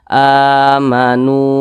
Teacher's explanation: huruf wa sukun di belakangnya hurufnya berbaris dah maka dibaca panjang Mad Thobi'i panjangnya dua harakat atau kira-kira dua ketukan